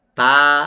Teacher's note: তাটাকে open করে light করে পড়বেন, এক আলিফ টানবেন।